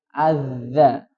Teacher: Kalau posisi lidahnya sudah keluar, dipastikan itu sudah berbunyi za